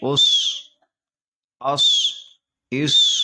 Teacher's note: اس میں جو ہے حروف صفیریہ میں سے سین ہے، صاد ہے، اس لیے سیٹی جیسے آواز نکلے گی۔